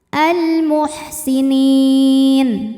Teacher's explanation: alif lam qamariah sebab alif lam menghadapi huruf qamariah yaitu mim maka lam dibaca jelas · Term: alif lam qamariyah